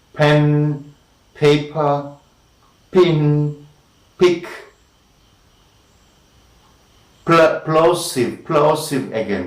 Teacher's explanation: the closing stage, the hold stage and the release stage is between the lips, both the lips we can call p and b as bilabial plosives